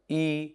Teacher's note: ई का उच्चारण स्थान है तालू